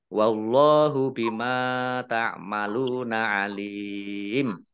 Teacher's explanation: Allahnya dibaca tebal karena harokat di depannya fathah